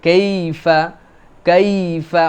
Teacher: এটা হচ্ছে নরম করে উচ্চারণ হবে, ইয়ার উপরে সাকিন, আগে যদি জবর হয় তাহলে আমাদের জন্য এই ইয়াটা কাইফা এরকম যেন না হয়, কাইফা, কাইফা, মানে এটা একটা নরম হবে, লিন।